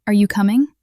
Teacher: Your voice rises slightly at the end. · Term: rising intonation